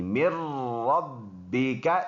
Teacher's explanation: نون ساکن اور تنوین کے بعد یہ اوپر ہمیں لکھا ہے، جب نون ساکن اور تنوین کے بعد حروفی اور ملون میں سے کوئی ورڈ آ جائے تو وہاں پر لام اور را میں بغیر غننے کے ادغام ہوگا، یعنی ناک میں آواز نہیں لے کے جائے گا. جیسے اس والے ورڈ میں ہم پڑھ رہے تھے، جیسے اس والے مر ربکا میں ہم پڑھ رہے کہ ناک میں آواز نہیں جاتی. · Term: بغیر غنہ کے